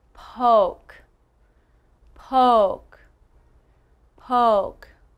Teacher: Now that O sound, you can see that my mouth starts big and gets smaller. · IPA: /oʊ/